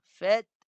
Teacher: ta mati dengan tahan dulu suara, ta tahan suara dan lepas nafas. Fath. Fath tahan suara, lepas nafas.